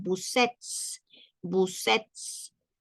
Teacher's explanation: acá pronunciamos la S y la E juntos